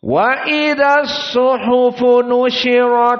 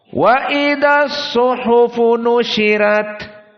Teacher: pertama qiraah jumhur dalam keadaan tafkhim ro kedua qiraah Wars dalam keadaan tarqiq arro